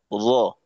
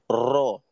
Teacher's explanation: যেমন যদি আমি এইভাবে বলি র, একটা র উচ্চারণ হলো র, কিন্তু যদি আমি বলি র, তো মূল উচ্চারণের আগে অনেকগুলো ছোট ছোট রয়ের বাচ্চা তৈরি হয়ে গেল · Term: তাকরার